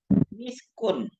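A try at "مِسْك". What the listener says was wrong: Misk, kalau berhenti misk. Kan kita berhenti di situ, apa namanya?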